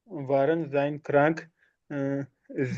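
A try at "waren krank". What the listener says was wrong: जाइन नहीं बोलना, वारन क्रंक, वारन क्रंक।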